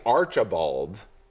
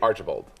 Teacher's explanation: It has to be a quick middle syllable.